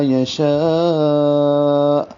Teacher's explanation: لمبا کر کے آخر میں پڑھیں گے اور حمزہ ساکن جھٹکے سے